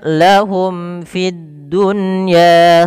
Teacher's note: mim mati bertemu fa, jelas izhar syafawi. Fid dunya ada di sini alif lam, kita namakan dengan alif lam syamsiyah, yaitu alif lam yang tertulis tapi tidak dibaca lamnya, langsung ke huruf dal dan dia ditasydidkan.